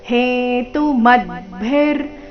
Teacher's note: ಮ ಮೇಲೆ ಆಘಾತ ಮದ್ಭಿ ಆದನಂತರ ಅರ್ಧರಕಾರ